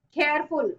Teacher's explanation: Careful on care, not full or less. The stress can never be there on the suffixes.